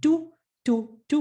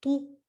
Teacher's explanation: the only difference between the tu and the tu is the tongue being curved